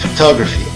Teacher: A entonação ocorre somente na segunda sílaba, enquanto na primeira e na terceira utilizamos o som átono, A, photography. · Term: schwa sound